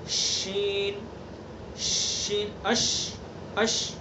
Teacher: اور ادا کرتے وقت جو اس کی صفت تفشی یعنی آواز کو پھیلا دیں گے